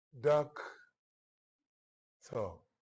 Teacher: a stressed syllable is followed by an unstressed syllable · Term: trochaic